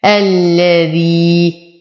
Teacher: يا ساكنة ما قبلها مكسور، فهو من الطبيعي حركتين